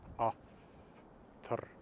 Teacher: I'm pronouncing it as a bilabial fricative. It's a little bit more like I'm using both of my lips, but I'm pushing the air through like it's an F.